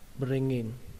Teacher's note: có thể nối chữ ngờ này với chữ in thành là bring in